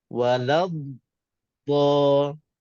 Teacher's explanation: Asalnya dha mati dengan dha berbaris atas. Kena singgah atas dha mati baru pergi kepada dha baris atas.